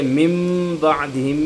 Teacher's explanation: نون ساکن کو ہم پڑھ نہیں رہے بلکہ اس کو تبدیل کر دیا ہم نے میم سے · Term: اقلاب